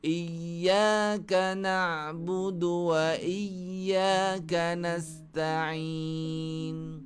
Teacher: Sifat huruf ya, dia tahan udara tapi suara lepas. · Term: rakhawah